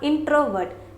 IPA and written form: ˈɪn.trə.vɝːt (Introvert)